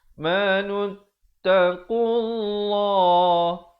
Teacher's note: Lafzul jalalah dibaca tebal 2 harakat.